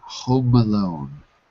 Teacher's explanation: the M of Home passes to the a in Alone